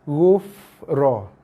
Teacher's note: Terus masuk. Settlekan fa berserta dengan sifat dia. Dia ada keluar hembusan nafas.